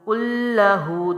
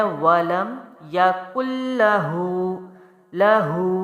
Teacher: دو حروف کا لام پہ ٹائم دیا ہے، سختی جماؤ ہے، پھر اس کو جلدی چھوڑنا ہے